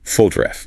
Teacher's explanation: That second O reduces to a schwa · The stress is on the first syllable